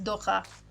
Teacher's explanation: You got that fancy ch. We love that velar fricative.